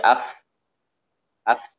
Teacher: Suara fa itu keluar dari punggung bibir bagian bawah. Dari punggung bibir bagian bawah. · fa ini keluar dari bibir bawah bagian belakang. Ya, yang agak ke dalam bibir, bawah bagian belakang agak ke dalam.